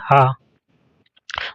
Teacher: पहला है स्वर यंत्रमुखी, इसको काक लय भी कहते हैं। जिन व्यंजनों के उच्चारण में मुख गुहा खुली रहती है और वायुबंद कंठ को खोलकर झटके से बाहर निकलती है उसे काकलय व्यंजन कहते हैं, जैसे हा।